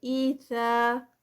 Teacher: تو اذا میں زا نہیں پڑھی جائے گی را کے ساتھ بلکہ زال ہے، یہ زال اور بہت نرمی سے. اذا اور یہ 2 کاؤنٹس.